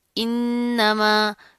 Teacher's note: اس کو کھینچ کر لمبا کر کے پڑھیں گے، انما، انما، نون کے اوپر تشدید آ رہی ہے، سختی سے جما کر مضبوطی سے پڑھیں گے، غنہ کریں گے اور یہ جو پھر اس کے میم کے ساتھ کا جو